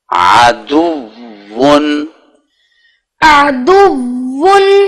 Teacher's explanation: آپ عین سے پہلے تھوڑا سا وہ حمزہ یا الف کی سی آواز دیتے ہیں، وہ نہ ہے